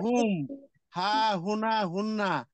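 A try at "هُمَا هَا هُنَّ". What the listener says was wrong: হুনা কেন? এটা কি নুন? দেখেন তো, এটা নুন নাকি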